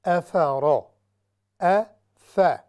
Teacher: افرا، ف، یہاں پر آپ نے دیکھا ہوگا حمزہ یعنی الف ہے، اصل میں یہ حمزہ ہے، اس کے اوپر فتحہ ہے، اور حمزہ یعنی یہ لائٹ حروف میں سے ہے، باریک، تو یہاں پر ہم نے آواز کو بالکل باریک رکھنا ہے۔ افرا، پھر را مفخمہ ہے یعنی ہیوی ہے، را پر پڑی جائے گی، اور اس کی وجہ چونکہ اس پر فتحہ ہے، زبر ہے، اس وجہ سے یہ را ہیوی ہوگی۔